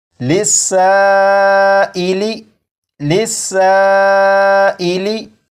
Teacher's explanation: مد متصل ہوگا، اور اسے بھی 2 یا 2.5 الف کے برابر کھینچ کر پڑھیں گے